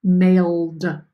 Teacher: You didn't hear the ed, you just heard a d, a sharp d, because it is a noisy letter that ends our base word. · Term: D sound